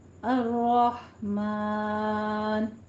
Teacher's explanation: الرحمن را کو آپ نے تشدید ہے رائے مفخم ہے یہاں پہ. ہا کو وسط حلق سے ادا کرنا ہے. میم کے اوپر فتحہ قائمہ ہے لیکن آپ نے ایک دھیان رکھنا ہے کہ نون جو اس کے بعد آ رہا ہے اس کا ساؤنڈ میم میں نہیں آنا چاہیے.